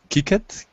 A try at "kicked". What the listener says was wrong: Remember, because it's a K, it sounds like a T. And so you don't say the E part here.